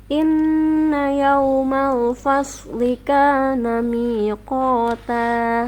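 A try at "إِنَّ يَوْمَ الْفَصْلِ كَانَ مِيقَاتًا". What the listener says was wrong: Ya, yaunya kurang mencucu ya. Yau, bunyi ya. Tidak yau tapi yau ya. Merapat lagi.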